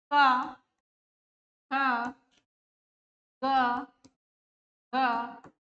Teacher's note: कंठ यानी गले से उच्चारित होने वाले वर्ण है